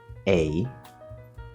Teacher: So di is a prefix that means two. So this is actually two vowel sounds combined into one sound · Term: diphthongs